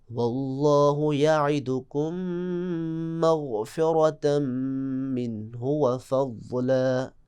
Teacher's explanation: اب اگلی مثال دیکھیں، ایک مثال اگلی، واللہ یعدکم مغفرہ، یعدکم، کم کی آخر میں جو آپ دیکھیں میم ساکن، مغفرہ کی پہلی میم متحرک، تو یعدکم کی میم کو مغفرہ کی میم میں آپ ادغام کریں گے اور غنّے کے ساتھ